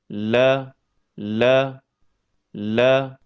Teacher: Huruf lam keluar dari ujung tepi lidah yang bertemu dengan gusi bagian atas dekat makhraj huruf ro.